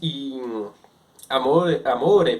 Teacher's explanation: a pronúncia vibrante dental que a língua ela vibra atrás do dente